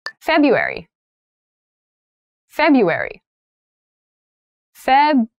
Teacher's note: That first R isn't really pronounced.